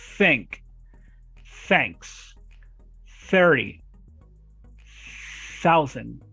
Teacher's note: Yes, we have 2 TH sounds. The first one is voiceless. Guys, voiceless is that it doesn't vibrate.